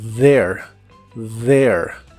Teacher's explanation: la th se pronuncia como una d vibrante there there y usaremos la palabra about it que significa acerca